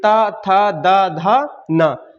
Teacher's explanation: तो जीभ का अगला सिरा दांतों में टच होता है, तो वो कौन सा हो जाएगा, दंतव्य व्यंजन।